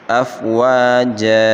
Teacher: واو کے بعد الف ہے، الف مدہ، اس کو 1 الف کی مقدار کھینچ کر پڑھیں گے